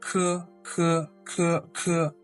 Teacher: Now with k, k, k, k, you require a lot of air. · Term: aspirated sound